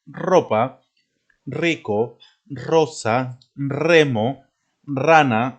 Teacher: todas las palabras que empiecen con ere se pronuncia de esta manera con la r fuerte